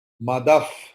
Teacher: Madaha is written, but after Visarga there is Pa. So Visarga's pronunciation will be Pa.